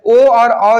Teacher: कंठ और ओठ से जो है ओ और औ जो है इनका उच्चारण स्थान क्या होता है कंठ और ओठ